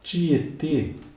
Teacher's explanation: circunflexo porque o timbre é fechado